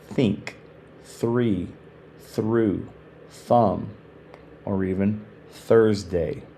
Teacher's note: The soft th is unvoiced.